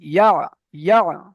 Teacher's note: ইয়া আইন জাবার এর উচ্চারণটা হবে ইয়া, ইয়া, গলার ভিতরে যাবে